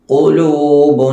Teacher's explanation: ഖാഫിന്റെ മഖ്റജ് നാവിന്റെ അങ്ങേയറ്റം.